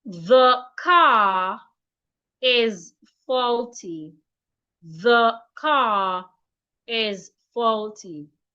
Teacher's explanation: Again, if you have a word ending in letter R in a sentence, if the next word in that sentence starts with a vowel letter, when reading that sentence or when speaking, you are expected to link the R to that vowel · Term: linking